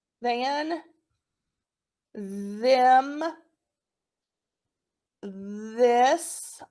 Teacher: all those are voiced your vocal chords move